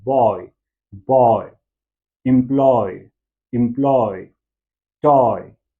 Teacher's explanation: ये जो ओ से ई की तरफ जो ग्लाइड हो रहा है, ये एक डिप्थोंग बन रहा है